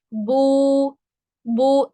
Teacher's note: वाव मद्दा को अदा करते वक्त होंठ मुकम्मल गोल होते हैं मगर दरमियान में खला बाकी रहता है। जैसे यहाँ पे आप देख रहे हैं थोड़ा सा खला बाकी है।